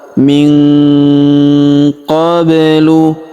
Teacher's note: Huruf nun sukun bertemu huruf qa, maka nun sukunnya melebur ke huruf qa. Kita baca dengung dan samar. Dengungnya kita tahan 2 sampai 3 harokat.